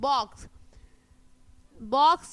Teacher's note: when you pronounce the word box it ends with a hissing sound